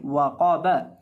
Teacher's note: बा को हम लंबा करके नहीं पढ़ेंगे, ना ही वाव को लंबा करके पढ़ेंगे, बल्कि इसको पढ़ेंगे वाक़ाबा।